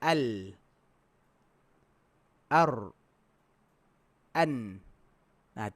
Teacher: Tiga tu makhraj dia sama. Tapi ra tu tak dapat, dia renggang.